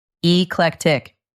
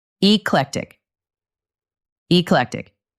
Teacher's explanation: The stress is on the middle part.